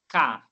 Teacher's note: O som parou lá na garganta, eu apertei para falar casa. K. Então o som parou aqui, ó. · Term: consoante